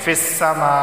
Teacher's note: یہاں پہ مد متصل ہوگا کہ سماء کے اندر الف مدہ اور حمزہ دونوں جمع ہو گئے ہیں، اس وجہ سے اسے لازمی 4 الف کے برابر کھینچ کر پڑھنا ہے